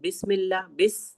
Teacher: सीन में सीटी सी आवाज आती है।